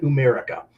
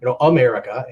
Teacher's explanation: the A turns into an oo sound. So it's just a vowel switch.